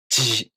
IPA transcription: ʑ